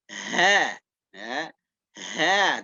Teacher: ketika kita mengucapkan huruf H ini harus diiringi dengan keluarnya angin